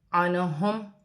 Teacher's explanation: میم ساکن میں غنہ نہیں ہوگا